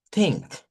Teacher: Solo hay un par que se hace con la lengua en medio de los dientes y por eso se le llama interdental o dental. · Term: la consonante TH